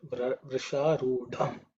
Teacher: This is the fourth letter in the ta varga, so it has to be aspirated.